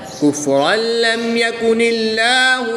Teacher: دو زبر کی تنوین کے بعد لام حروف یرملون میں سے ہے تو یہاں پر ادغام بلا غنہ ہوگا، یعنی کہ بغیر غنہ کے ادغام کر کے پڑھیں گے